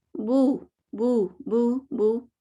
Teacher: واو مدیہ یعنی ہونٹوں کو مضبوطی سے گول کرنا اور زبان کو پچھلا حصہ اوپر اٹھانے سے ادا ہوتا ہے. تو یہ پچھلا حصہ ہم نے کیوں اٹھایا نہیں بلکہ اٹھ گیا, سمجھ لیں, ٹھیک ہے.